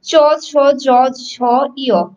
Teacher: জিহ্বার সাথে তালুর একটা স্পর্শ হচ্ছে, সেই জন্য সেগুলো স্পর্শ বর্ণ।